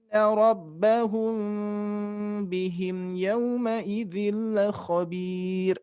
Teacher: di sini ada mim mati bertemu ba yang berwarna hijau, ikhfa syafawi, kita dengungkan, harus ditahan.